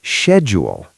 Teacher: And in the UK, we say schedule. It starts with a sh sound, like she.